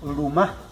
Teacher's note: La letra L en Wayunaiki tal vez es la más complicada de pronunciar porque esta no suena como la L normal del español. Esta L va a sonar como entre L y R.